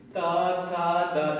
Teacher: आपकी जीभ का अगला हिस्सा ऊपर उठकर दांत से वापस आ रहा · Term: दंत मूल वर्ण